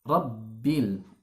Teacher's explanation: Jangan sampai kita mengucapkan huruf ba yang bertasydid itu bocor sehingga masuk ke rongga hidung.